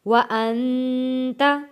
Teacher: نون ساکن ہے، غنہ ادا کریں گے